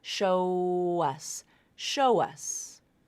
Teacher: so back vowel linking to a vowel so you're going to insert the W consonant · it ends in the O vowel, the O diphthong. So that's a vowel sound linking to the vowel sound in us, So back vowel linking to a vowel.